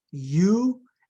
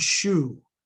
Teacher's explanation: U is the approximate shu is the fricative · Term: palatals